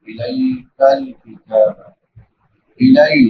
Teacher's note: لام کے بعد یا لین ہے یا ساکن ما قبل فتحہ یعنی زبر ہے اس کو نرمی سے ادا کریں گے